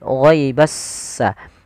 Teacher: Alif lam syamsyah adalah alif dan lam yang dia ditulis tapi dia tidak dibaca huruf lamnya sehingga langsung diidgamkan ke huruf setelahnya yaitu huruf sin sehingga langsung di huruf sinnya bertasydid ghaibassa. Jadi s-nya seakan-akan ada dua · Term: alif lam syamsiyah